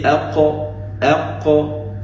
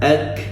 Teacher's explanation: When you look at qaf and kaf, they come from the same articulational point, but qaf is below kaf